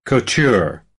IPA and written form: kuːˈtʊr (Couture)